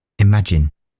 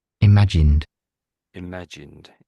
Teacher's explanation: So, they're taking the D off.